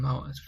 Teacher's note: the Mao syllable, which I'm pronouncing Mao as the first tone, and that's Mao syllable is pronounced in all 4 tones.